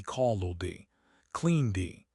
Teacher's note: hold the final consonant a little longer before releasing the D